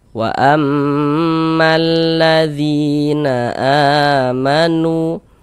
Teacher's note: ini a dibaca panjang, ini namanya adalah mad badal